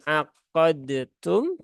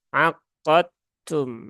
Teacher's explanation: maka huruf dalnya wajib diidghamkan ke huruf ta sehingga bukan aqadtum tetapi langsung aqadum ya aqadum Nah jadi harus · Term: idgham Kamil